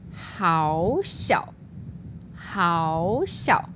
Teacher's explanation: So normally we have two third tones, but when we do the variation, the first one becomes the second tone.